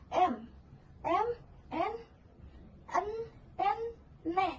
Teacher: aliran udara dihambat di rongga mulut, tetapi langit-langit lunak diturunkan, sehingga udara keluar melalui rongga hidung